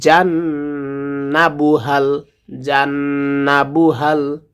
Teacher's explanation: হাটা হলকের শুরু থেকে উচ্চারণ হয়।